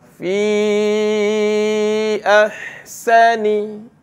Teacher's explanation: Dipanggil mad jaiz. Jadi panjangkan dia dengan kadar harakat empat.